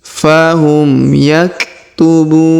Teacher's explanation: Huruf bu kita panjangkan 2, 4 atau 6 harokat karena di depan huruf bu terdapat waw sukun sebelum huruf pemberhentian, dan huruf pemberhentian huruf na kita sukunkan atau kita matikan.